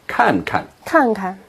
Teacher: when you have a verb repeated like this, the second verb is usually in the neutral tone.